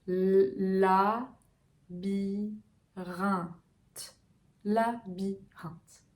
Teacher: on a une voyelle nasale, un. La mâchoire est très relâchée.